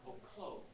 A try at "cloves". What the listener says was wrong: Yeah, you're trying to say cloves, yeah. Sound like you're saying gloves.